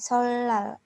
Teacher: Solal kan tulisannya tuh solnal, tapi dibacanya itu solal, jadi berbunyi L. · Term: lateralisasi